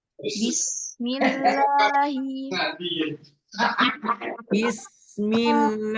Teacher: Tidak boleh dia bis tapi langsung bism